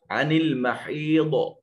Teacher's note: تو ضاد حروف مستعلیہ میں سے ہے، صفت استعلاء اس میں موجود ہے، اس کو موٹا اور پر کر کے پڑھیں گے